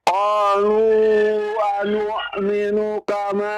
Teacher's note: A-nya panjang, A-nya. Ada alif di sana.